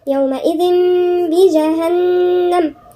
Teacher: احنا بدل ما نقول يومئذ عن النون لا هننطقها ميم وبغنة كمان · هنا النون حرف غنة مشدد، واحنا عارفين النون المشددة والميم المشددة هنقول عليهم حرف غنة مشدد ونغن فيها مقدار حركتين